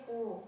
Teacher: होठों की स्थिति गोलाकार हो जाते हैं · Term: वृत्त मुख